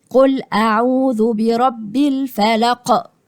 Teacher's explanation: شايفين القلقلة اللي هو اهتزاز الصوت وانت بتنطقه